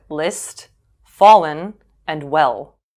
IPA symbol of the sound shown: l